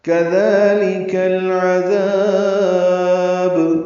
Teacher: کاف زال نرمی سے پڑھیں گے، لام کاف بھی باریک پڑھیں گے